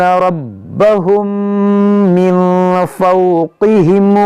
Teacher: کے ساتھ ربہم، را پر زبر ہے تو موٹا پڑھیں گے، میم ساکن کے بعد دوسری میم یہاں پر ادغام شفوی ہوگا ، یہاں نون ساکن کے بعد فا یہاں پر اخفا ہوگا،